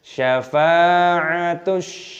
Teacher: ada huruf sinnya berharokat tasdid dan ada tanda fathah mad, maka dimasukkan dan setelah itu shinnya dibaca panjang. Syafa'atush, 2 ketukan. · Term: alif lam samsiyah